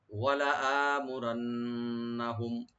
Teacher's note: ওয়ালা আমুরান্নাহুম, দেখেন এখানে হামজা, লামে টান হবে না কিন্তু হামজাতে একালিফ টান হবে।